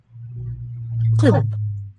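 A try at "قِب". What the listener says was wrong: Oops. Precisely not that one. Kib with the uvular.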